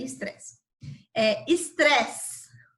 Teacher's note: Aí vamos para outro exemplo, que é o estresse. Quando nós falamos a palavra estresse, a sílaba que mais tem intensidade no som é o tre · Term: sílaba tônica